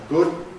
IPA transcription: gʊd